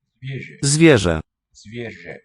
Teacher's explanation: So the R and the Z seem to be telescoping into a single sound.